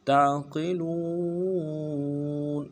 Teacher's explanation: عین کو موٹا مضبوطی سے ادا کرنا ہے، قاف کو موٹا پڑھیں گے، لام کو واو کے ساتھ ملائیں گے، واو مدہ ایک الف دال میں کھینچ کے پڑھیں گے، نون کو نرم سے ادا کریں گے۔